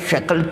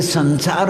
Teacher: एक तालव्य श आता है और एक दंती स, दांत से बोलने वाला स